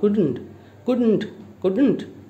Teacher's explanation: d will be spoken not clearly but half of the sound